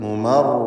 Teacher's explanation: ഷദ്ദുള്ള റാഇന് തക്രീർ വരാതെ സൂക്ഷിക്കണം